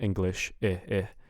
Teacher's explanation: most of the time, the I in English is going to be like an I instead of an E